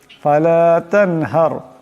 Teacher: এখানে নুন সাকিনের পর হা আসছে, হা হলো ইজারে হালকির হরফ, তাই এখানে এই নুন সাকিনকে বেলাগুন্না পড়তে হবে। এখানে হার রা সাকিন ডানে জবর, তাই রাকে মোটা আওয়াজে পড়তে হবে।